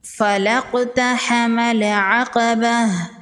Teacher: قاف حروف مستعلیہ میں سے ہے، قاف کو پر پڑھیں گے۔ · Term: قلقلہ